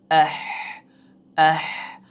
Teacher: halqumning oʻrtasidan chiqadigan harf hisoblanadi. Ha halqum mana shu joy deb oladigan boʻlsak va mana bu joy ya'ni erkaklarni kekidan sal yuqori qism mana bu joy.